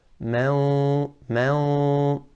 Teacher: The ghunnah is from the nasal cavity. And there's a little sound from the mouth.